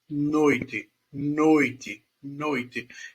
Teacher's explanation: Esse O aí é um ditongo oral porque o som está todo aqui na boca